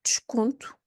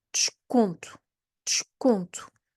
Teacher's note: that E is mute essentially, and you have a sh sound, ch, but with a d before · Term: des prefix